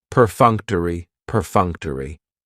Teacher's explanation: That third syllable has the schwa, and it's going to end with that long E sound.